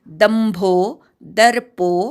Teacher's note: दर्प मधल्या द वरा आघात